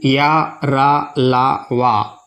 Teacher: इन्हें उच्चारित करते समय जिह्वा मुंह के आंतरिक भाग से पूरी तरह स्पर्श नहीं करती है। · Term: अंतस्थ व्यंजन